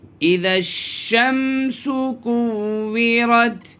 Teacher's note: اس میں ذال کو ڈائریکٹ جو ہے شین میں ملائیں گے تشدید والے حرف میں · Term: حروف شمسی کا قاعدہ